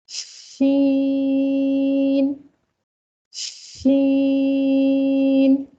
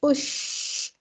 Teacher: हम आवाज को पहले फैला रहे हैं मुंह के अंदर, शीन की सिफ्त को पैदा कर रहे हैं, उसके बाद हम शीन को अदा कर रहे हैं। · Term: तफशी की सिफ्त